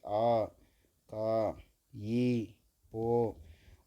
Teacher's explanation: நீண்ட ஒளிய உடைய நெடில் எழுத்துக்களை ஒளிக்காகும் நேரம் இரண்டு மாத்திரை